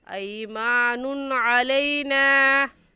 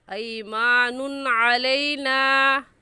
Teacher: यहाँ नून की तनवीन पर हम गुन्ना नहीं करेंगे। क्यों नहीं करेंगे, کیونکہ تنوین کے بعد حروف ہلکی جو کہ 6 ہیں، حمزہ ہا، عین ہا، غین خا، ان میں سے عین آ گیا ہے، اس لیے اس تنوین پر ہم غنہ نہیں کریں گے اور ایسے پڑھیں گے ایمان علینا۔